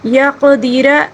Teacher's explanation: را کو پر پڑھیں گے کیونکہ را کے اوپر زبر ہے